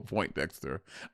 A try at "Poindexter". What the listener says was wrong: Poindexter, not Point Dexter. Point. You said point.